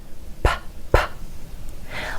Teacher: you can actually feel a small puff of air on your hand if you hold it up in front of your lips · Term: air puff